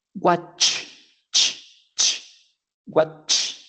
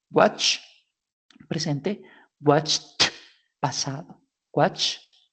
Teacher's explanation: Watch, la terminación si usted se toca la garganta, no va a generar vibración en su garganta, ¿cierto? Como no genera vibración, lo vamos a relacionar con un sonido que tampoco genere vibración, que en este caso es watch, presente, watched, pasado, watched, ¿vale?